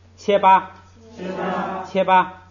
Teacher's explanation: 都是第一音节的降调变成了平调